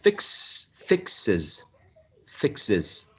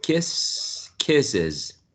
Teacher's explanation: there is a sibilant sound at the end therefore we have to add an extra syllable